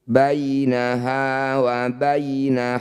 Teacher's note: Ya sukun, ini ada 2 di sini. Sama-sama didahului fathah. Disebut bacaan madlin. Bunyi ya-nya baca dengan lembut.